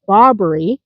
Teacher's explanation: One of them is the Barbari, emphasis on the first syllable